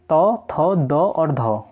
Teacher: जब हम त वर्ग का उच्चारण करते हैं तो जो हमारी जीभ होती है वह दंत मूल मतलब जहां पर दांत निकलते हैं ना, तो वहां पर टच होते हैं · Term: दंत्य वर्ण